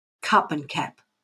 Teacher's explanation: In Australia, it's the A and the U that are similar.